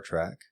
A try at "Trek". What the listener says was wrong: Yeah, Trek, not track, babe. Don't go that way. You're a Trekkie, not a Trackie.